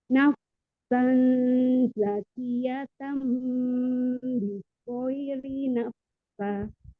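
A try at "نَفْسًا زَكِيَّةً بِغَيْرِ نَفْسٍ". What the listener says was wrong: Nafs. Nggak pakai lagi sa. Nafs. Ya. Naf. Terus abis naf, kan keluar udara tuh. Terus tiba-tiba langsung tinggal s-nya aja. Nafs. Ya, s-nya nggak kedengeran. S-nya. Nafs.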